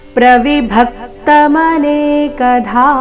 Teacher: ಚರಣದ ಕೊನೆಗೆ ಧ ಮಹಾಪ್ರಾಣ ದೀರ್ಘ